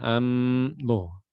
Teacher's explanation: huruf mim betul-betul mulutnya tertutup